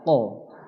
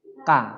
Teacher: Posisi lidah seperti pada gambar. Kalau qaf sedikit ke dalam mendekati kerongkongan. Kalau kaf sedikit di depan daripada qaf tadi.